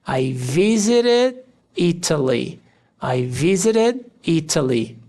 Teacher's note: tanto o som do T, do visited e do Italy podem ser pronunciados como R. Visited, visited e Italy ou visited e Italy.